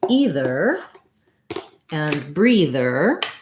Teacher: in the words either and breather, these TH sounds are voiced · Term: voiced TH